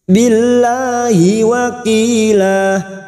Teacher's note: Lam jalalah yang sebelumnya kasroh kita baca tarkik atau tipis